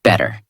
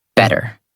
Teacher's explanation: In the first version, your mouth stops more. In the second version, the sound flows more smoothly. That smoothness is the American feeling.